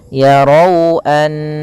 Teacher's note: pada lafal di sini ada fathah pada Raf ro yang mana ro tebal bertemu dengan huruf wau maka di sini kita namakan dengan bacaan Lin yaitu bacaan yang lembut di dalam lafalnya